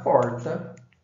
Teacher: Se eu pegar essa questão do R, nós vamos ver que as pessoas do interior de São Paulo, independente da sua variação, da sua diferença de grupo socioeconômico, vão falar porta com esse R retroflexo, que é esse R puxado, estendido